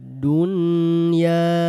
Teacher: Lafaz dunya nun sukunnya jangan dileburkan. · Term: Izhar mutlak